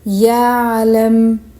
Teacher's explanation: Now the letter Ain. Letter Ain is the second letter articulated from the middle of throat. Ain is a Jahar letter, meaning reciter will rely on the sound of the letter and not the breath.